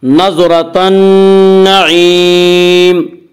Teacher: نون یہاں حروف شمسی میں سے ہے اور نون سے پہلے الف اور لام آ رہے ہیں، اس لیے الف اور لام کو نہ پڑھیں گے بلکہ بعد والے حرف سے ملا کر پڑھیں گے۔ نون مشدد غنہ ہوگا۔ نظرۃ النعیم، نعیم میں مد عارض وقفی ہوگا۔